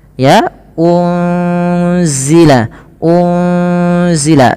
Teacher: harakat unal unzila ini ada nun sukun bertemu dengan huru Z Apabila ada nun sukun bertemu dengan huruf Zai ini cara membacanya adalah nunnya disamarkan kepada huruf Zai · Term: Ikhfa Hakiki, ikhfa hakiki